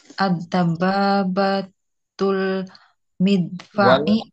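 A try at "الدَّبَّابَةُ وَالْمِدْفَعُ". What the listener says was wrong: Ada waw.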